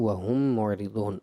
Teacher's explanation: وَهُم میں بیٹا میم ساکن کے بعد دوسری میم ادغام شفوی کا قاعدہ ہے